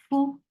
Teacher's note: For the circular lips, the sound is very short.